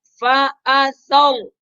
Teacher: فا باریک، حمزہ بھی باریک، سا باریک اور را موٹا حرف، لہذا صرف را کو موٹا کر کے پڑھیں گے، باقی سب حروف کو باریک کریں گے۔